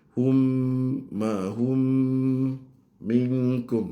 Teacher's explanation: Mim dengan mim idgham mutamasilain